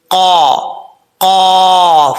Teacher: قاف ہے دو نقطوں والا، حروف مستعلیٰ میں سے ہے، پر پڑھا جائے گا، اور اس کا مخرج ہے زبان کی جڑ اوپر والے تالو کے نرم حصے سے لگے تو قاف پڑھا جاتا ہے